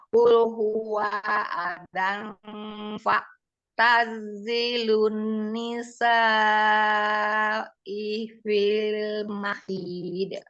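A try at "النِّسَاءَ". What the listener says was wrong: Bukan nisa'i, nisa'a. Nunnya Umi, nunnya.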